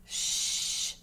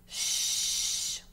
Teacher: It doesn't stop. It's a continuous shh. Okay? We put our teeth together, and we kind of feel a tingling when we do it. Okay? Shh.